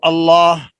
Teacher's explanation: اللہ سے پہلے حمزے پر زبر آ رہی ہے تو اللہ، اللہ کا جو لام ہے یہ پر پڑا جائے گا۔ اللہم، میم پر شد ہے یا غنہ ہوگا، اور غنے کی مقدار ایک الف کے برابر کھینچ کر پڑھنا ہوتا ہے۔